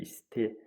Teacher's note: Bəli, i saitindən söhbət gedir. 2 hecalıdır. İ ilə başlayıb, i ilə bitir. Vurğu son hecaya düşür.